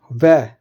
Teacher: जो व है वह दंत से भी वह बोला जाता है और ओष्ठ दोनों का यूज किया जाता है। इसलिए दंतोष्ठी उसको व्यंजन को बोलते हैं।